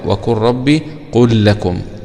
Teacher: بندغم اللام في اللام وهنا اللام في الراء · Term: الإدغام